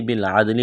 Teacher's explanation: الٹا پیشو، ولیجوہو، با لام زیر بل، عین دال زبر عد، دال ساکن ہے، قلقلہ کریں گے دال پر